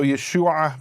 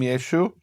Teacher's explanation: out on the contrary it was just the way people spoke they didn't pronounce the a so Yeshua became yeshu